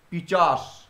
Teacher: নিশ্চয়ই তোমরা বুঝতে পারছো যে পিশাচ, পিশাচ থেকে আসছে পিচাস। তাহলে চ আর স পরস্পরের মধ্যে স্থান বদল করে নিল। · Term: ধ্বনি বিপর্যয়